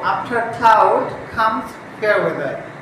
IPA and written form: ˈɑːf.tə klaʊd kʌmz feə ˈwe.ðə (After cloud comes fair weather)